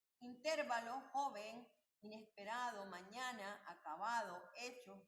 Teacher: graves tienen el acento en la penúltima sílaba